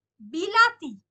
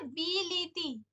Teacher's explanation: অর্থাৎ যেমন যদি আমি বলি যে বিলাতি থেকে হচ্ছে বিলিতি, তাহলে দেখো এই যে পূর্ববর্তী আর পরবর্তী ইকারের প্রভাবে মাঝখানে আকারটা ইকারে পরিণত হচ্ছে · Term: মধ্যগত স্বরসঙ্গতি